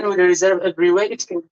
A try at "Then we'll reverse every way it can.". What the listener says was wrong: Is it reserve? Is it reserve or reverse?